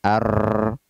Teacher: ujung lidah berbolak-balik mengetuk gusi atas